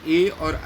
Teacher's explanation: ए और ऐ का उच्चारण स्थान क्या है? कंठ तालु है।